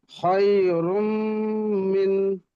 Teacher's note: তানবিনের পরে ইউমিনের চারটি অক্ষরের মধ্যে থেকে একটি মিম এসছে, তাই তানবিনকে মিমের সাথে মিলিয়ে একালি পরিমাণ গুণনা করে পড়িতে হয়।